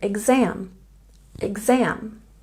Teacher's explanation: We can check our pronunciation with the stress on the second syllable in exam